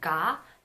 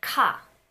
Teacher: can put a hand over here and compare gah and cop when you say gah the vibration in your vocal cords it starts from the get-go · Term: voicing